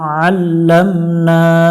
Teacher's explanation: উচ্চারণ করবো আল্লামনা এখানে নুনের উপর খালা জবর এক আলিফ টান দিয়ে পড়বো